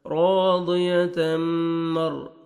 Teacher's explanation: तनवीन के बाद हुरूफ यरमलून में से मीम है, आपने गुन्ना करना है, इदगाम करेंगे गुन्ना के साथ।